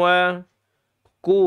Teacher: di sini istifal lidahnya turun karena dia huruf kaf. Dan kalau kita bicara makhraj, kaf ini dia tidak punya siapa-siapa di di lidah.